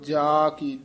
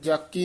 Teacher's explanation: ਸਮਗਰੀ ਪੂਰੈ ਠਾਕੁਰ ਕੀ ਭਰਪੁਰ ਧਾਰ ਰਹੀ ਸੋਭ ਜਾ ਕੀ ਰਹਾਉ ਜਾ ਕੀ ਸੰਬੰਧਕ ਉਚਾਰਨ ਕਰਨਾ ਲੰਬੀ ਆਵਾਜ਼ ਦੇ ਨਾਲ ਨਾਲ ਜਾ ਕੀ ਜਕੀ ਨਹੀਂ ਕਹਿਣਾ